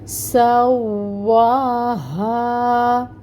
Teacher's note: سین کی جو صفت ہے نا سفیر کی، یعنی اس میں سٹی ہوتی ہے، وہ واضح کریں گے، ٹھیک ہے۔